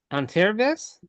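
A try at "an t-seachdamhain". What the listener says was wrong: Anteravish. Anteravish. Okay, yeah, so the S just disappeared. Yeah, and note that in the original word, the SE, I'll just remind us of the pronunciation, the SE and also the SI is pronounced as if it's an SH.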